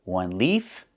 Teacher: One leaf with the F sound with no voice.